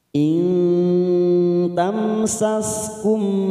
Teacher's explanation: nun sukun bertemu ta namanya ikhfa Hakiki kita samarkan